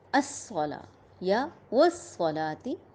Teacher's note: تا کی زیر اسے مجہول نہیں پڑھیں گے، اچھی طرح ادا کریں گے. واو پہ ہونٹ گول کریں گے